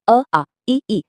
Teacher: इन्हें बोलने के लिए किसी दूसरे वर्ण की मदद की जरूरत नहीं पड़ती। हवा फेफड़ों से निकलती है और बिना किसी रुकावट के बाहर आ जाती है। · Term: स्वर